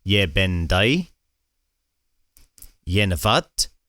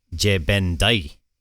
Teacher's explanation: it really seems like the most common form is ye in East Perthshire. Whereas over in the West, it seems that je is more common.